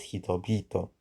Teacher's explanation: The first consonant H in the second word hito becomes voiced hi to be becoming hitobito. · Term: sequential voicing